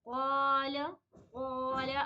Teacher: آپ لوگ غور کریں گے کہ اس میں الف بھی پر ہی بن جاتی ہے